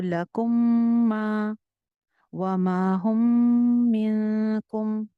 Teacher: मीम के बाद मीम आ जाए तो गुन्ना होता है